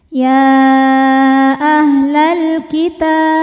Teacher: Maka lam sukun dibunyikan dengan jelas atau disebut dengan idhar qomari.